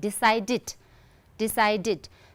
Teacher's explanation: okay, ed is pronounced as id. So, here we need to make an extra syllable, right? We need to add an extra syllable, t.